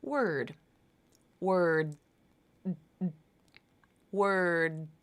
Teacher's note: my tongue tip came up for the beginning of the D there was some vibration from my voice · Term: unreleased D